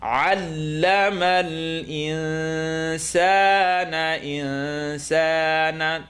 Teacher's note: Noon sukoon followed by seen, tongue not touch.